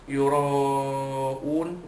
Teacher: Yura'un, ra pertama sekali, ra itu dibaca dari atas, tebal, namanya tafkhim